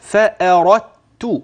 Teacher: يعني من الراء إلى التاء مباشرة. سمعت مني دال؟ لا، الدال أدغمت هكذا.